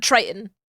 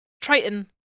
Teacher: I am like physically incapable of hitting the second T in the word Triton.